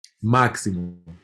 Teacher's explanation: In this word means box, and it's pronounced caixa, caixa, and you can hear where it has that sh sound, caixa. But in a word like maximo, you can definitely hear that there's a x, x like a ks